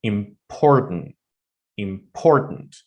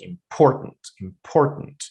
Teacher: that im is not really pronounced strongly, as well as the end of it, tent, is not really pronounced, let's say, strongly. The only part that is stressed is por, important, important.